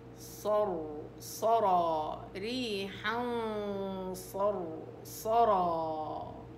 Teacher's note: غنة الإخفاء مفخمة، والصاد والراء والصاد والراء والألف، كل هاي مفخم.